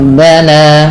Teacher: yaana dengan mengait ya dengan meninggikan suara sedikit dengan memanjangkan hurufnya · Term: mad thabi'i